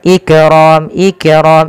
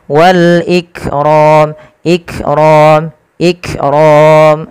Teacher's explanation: langkah pertama tahan dulu suaranya Ik baru alirkan nafasnya tapi tidak lama-lama